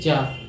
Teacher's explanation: चा बोल रहे तो हमारी जीभ कहीं जाके उस पे तालु पे चिपक रही, चा, इसको कह दिए तालु। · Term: तालव्य